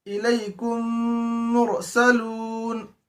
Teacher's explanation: Formula number 1 था इदगाम शफवी, यानी मीम साकिन के बाद अगर मीम आए तो मीम को मीम से मिलाकर गुन्ने के साथ पढ़ेंगे। उसकी मिसाल दी गई इलैकुम मुरसलून, तो ये था इदगाम शफवी।